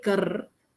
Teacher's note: when I say kar, ka, tongue is normal, ra, it's rolled back. It is in the murdhanya position. Kar. Now, if I have to say na, then I'll have to bring the tongue back to the position 4, from 3 to 4.